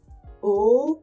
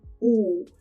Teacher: His 'ooh's were perfectly rounded. They were pure vowels. They were not spread.